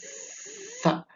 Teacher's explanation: Letakkan diantara gigi ya gigi seri atas dan gigi seri bawah seakan-akan kita menggigit ujung lidah ya kemudian kita tiup perlahan dengan mengucapkan seperti huruf s tapi dia lebih tipis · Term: huruf tsa